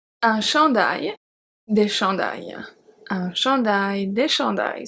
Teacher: So remember, we don't pronounce the S.